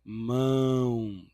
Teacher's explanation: O vai ter o som do U, tá?